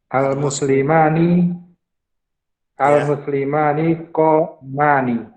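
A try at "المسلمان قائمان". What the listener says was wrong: Nah, mumtaz.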